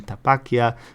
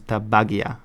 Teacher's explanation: the Basque P, T, and K, they become voiced.